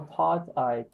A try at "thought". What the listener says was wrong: again, taught instead of thought.